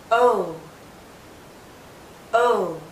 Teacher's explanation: Our lips are very rounded, but it's more open. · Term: long vowel sound